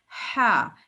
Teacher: ہا ان کو حروف حلقی کہتے ہیں. ہا، اس ہا کی آواز جو ہے نا وہ حلق سے آتی ہے اور یہ نرم ہوتی ہے